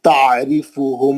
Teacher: आइन अच्छा रहना आपका, अलिफ से नहीं पढ़ना, आइन से पढ़ना, हलक के बीच से